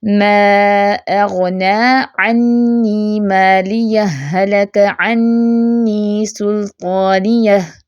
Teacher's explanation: پہلی ہا کو دوسری ہا سے ملا کر مدغم کر کے پڑھا جائے. جیسے ما اغنی عنی مالیہ، ہلک عنی سلطانیہ، ٹھیک ہے، یعنی کہ ایک اسٹریچ میں مدغم فی ہی کی آواز غالب رہے، یعنی کہ پچھلے ہا کی اپنی آواز نہ ہو، اگلے ہا کی صرف آواز ہو.